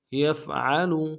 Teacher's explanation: گے، من یفعل، یفعل، یا کو فا کے ساتھ ملانا ہے، فا کو واضح کریں گے، عین کو موٹا کریں گے ، لام کو لم سے ادا کریں گے، یفعل، من یفعل